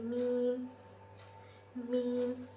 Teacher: मीम जो है दोनों होठ एक दूसरे से लगकर अदा होते हैं। · پھر میم جو ہے دونوں ہونٹ ایک دوسرے سے لگ کر ادا ہوتے ہیں